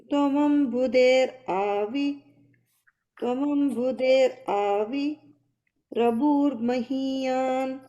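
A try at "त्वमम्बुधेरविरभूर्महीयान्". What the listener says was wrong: Yeah, and the rabur, you don't have to separate it. Tvamambhuder Avirabhur Mahiyan.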